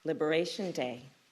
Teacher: We know that liberation is the stressed word, not day, right?